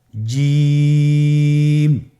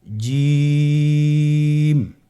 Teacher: জিহ্বার মধ্যখানটা লক্ষ্য করুন এবং তার বরাবর উপরে তালুর সঙ্গে লাগান, এরপর হরফটি উচ্চারণ করুন